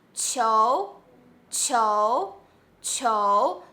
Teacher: you hear the t sound with yo sound together still you can hear the air has been pushed